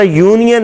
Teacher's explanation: یونین میں بھی جب ہم کہتے ہیں تو یو کی آواز وہاں کانسوننٹ ہے